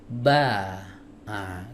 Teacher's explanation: contoh yang lebih jelas di huruf ba huruf ba dari mana makhraj dari dua bibir yang dipertemukan startnya dari situ mingkem dulu